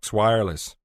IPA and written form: ˈwaɪə.ləs (wireless)